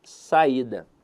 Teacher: no caso ela é uma paroxítona por um motivo muito simples a sílaba tônica está na penúltima sílaba